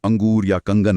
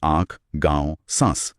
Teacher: और चंद्रबिंदु में चंद्रबिंदु जिसे अनुनासिक कहते हैं। उसके उच्चारण में हवा नाक और मुंह दोनों से एक साथ निकलती है।